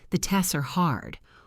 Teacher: Often we simplify the cluster. We might reduce the T so it sounds more like TESS.